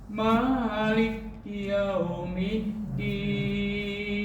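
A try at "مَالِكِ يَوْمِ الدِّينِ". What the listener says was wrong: Maliki yaum. Nah, di situ nggak ada tasydid di atas kaf. Maliki yaum.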